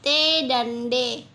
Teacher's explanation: daun lidah menempel pada gusi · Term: lamional alveolar